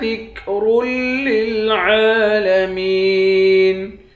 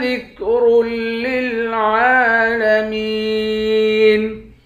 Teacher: را کو لام کے ساتھ ملا کر پڑھیں گے، را کو موٹا پڑھیں گے